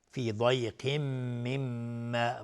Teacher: میم تشدید دارم 2 حرکت غنه میدیم.